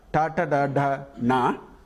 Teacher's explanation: Cerebral, which is the tongue will point towards the roof of this mouth.